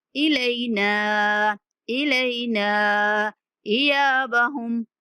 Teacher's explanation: العذاب الاکبر ان الینا ایابہم، ان پہ غنہ کریں گے، الینا، لام کے بعد یا لین ہے اور نون کو 3 سیکنڈ تک کھینچ کے پڑھنا ہے